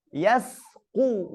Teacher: Kemudian huruf sin yang berdampingan huruf qaf, harus tetap tipis